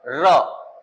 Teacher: हम जब र बोले तो लग रहा है जीभ आगे पहले कंपन करी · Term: प्रकंपन